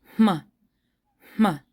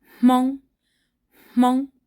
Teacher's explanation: You can actually feel your breath coming through your nose. And it actually comes first before the M is even voiced. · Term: pre-aspiration